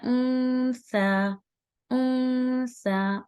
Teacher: اب یہ دیکھیں یہ مخرج بھی ہم نے سا کا آج پڑھا ہے، تو انسا نہیں پڑھنا ہے اس کو، یہ انسا نہیں ہے، اس کو پڑھتے ہیں انسا انسا. اون کی آواز کو چھپائیں گے، نون کی آواز کو چھپانا ہے، اور سا دو حرکت ہے انسا، کیونکہ اوپر کھڑی زبر ہے نا.